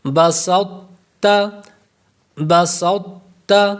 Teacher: سین باریک ہوگا، یہ نہیں کہ سین کو موٹا کر دیں گے